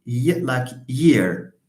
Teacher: Y is another palatal sound. So we refer to this as a voiced palatal.